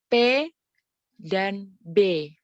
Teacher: P and B are bilabial. The lips are pressed together.